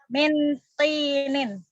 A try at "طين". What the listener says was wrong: Jangan pakai tak. Kalau pakai tak nanti bukan tanah liat artinya. Kalau pakai tak ya buah tin kan namanya? Nah, itu buah tin ini kalau pakai tak. Tapi ini pakai ta.